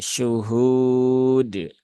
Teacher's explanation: Nah, Kemudian ini mat arid li sukun dan dalnya qalqalahnya jangan berlebihan menjadi syuhud. Nah, tidak perlu ada tambahan hamzah di belakang dal. Jadi cukup disentuhkan ke makhrajnya huruf dal kemudian dilepaskan syuhud.